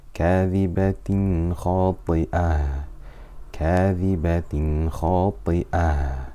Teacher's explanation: So we did Ithhar Halqi. We made the Noon Sakina or Tanween clear without any ghunnah. So to recap, whenever we have a Noon Sakina or Tanween followed by a throat letter, So Hamza, Ha, Ain, Ha, Ghain or Kha.